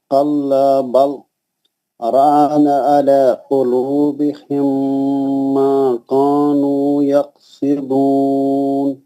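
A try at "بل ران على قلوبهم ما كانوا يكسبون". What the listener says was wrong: رانا نہیں بولنا. رونا رونا. مدیس نہیں کرنا. بول منہ سے پڑھے تو موٹا ہوتا.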